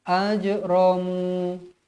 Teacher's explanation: Hakiki Aju Jim pun huruf Qalqalah jadi wajib dibaca melantun ajramu mu berhenti dengan kadar dua harakat